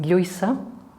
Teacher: A little bit further back, we have the post-alveolar consonants with the Lla sound, as in Lluisa